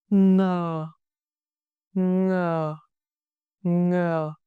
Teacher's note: Tongue position. Back of the tongue pressed against the soft palate. Back roots of the mouth. Airflow. Let air flow through your nose, not your mouth, similar to the ng in sing. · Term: initial nasal sound ng